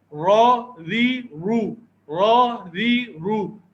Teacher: را ایک ایسا حرف ہے کہ جو زبر اور پیش کے ساتھ تو موٹا پڑا جاتا ہے لیکن زیر کے ساتھ یہ باریک پڑا جاتا ہے